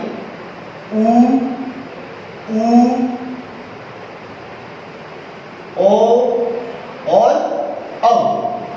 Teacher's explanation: इन स्वरों के उच्चारण में हमारे होठ वृत्त की तरह गोल हो जाते हैं, इस वजह से इन्हें वृत्ताकार स्वर कहा जाता है।